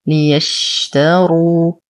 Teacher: نفخم الراء بعدها واو ساكنة فهو مد طبيعي.